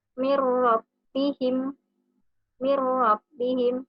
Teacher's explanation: nun sukun atau tanwin dimasukkan ke dalam huruf selanjutnya, yaitu huruf lam dan huruf ro, tanpa disertai dengan dengung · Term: idgham bila guna